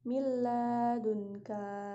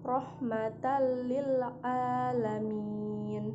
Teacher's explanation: Selanjutnya ada idgham bila gunnah, yaitu adalah cara membaca nun mati atau tanwin dengan memasukkannya pada huruf lam dan ro tanpa mendengung. Karena itu, huruf idgham bila gunnah terdapat dua macam, yaitu lam dan ro.